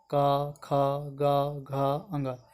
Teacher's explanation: क वर्ग, इनका उच्चारण कंठ के स्पर्श से होता है, क, ख, ग, घ, अंग, सब में आपको दांत तालु सब होठ नहीं सटेगा।